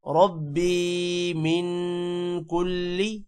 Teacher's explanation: ربی یا کو لمبا کرنا ہے اور من پر غنہ کرنا ہے۔ کلی لام کو لمبا نہیں کرنا۔